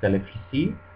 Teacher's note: Indonesian doesn't have this V sound. It's always replaced with an F.